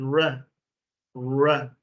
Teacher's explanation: they pronounce a soft r, even if it's a double R